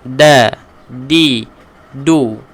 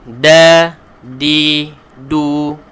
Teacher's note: huruf dal ini adalah huruf yang perlu kita tekankan hujung lidah ke pangkal belakang dua gigi kacip atas